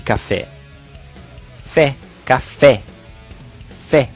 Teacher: fé sendo pronunciado com mais intensidade então em cafezinho a sílaba subir tônica permanece fé sozinho nem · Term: sílaba tônica